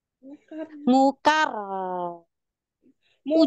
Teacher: ketika huruf ro tasydid atau ro sukun tahan di makhraj gigit di situ tahan jangan sampai lepas